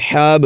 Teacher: با پر قلقلہ کریں گے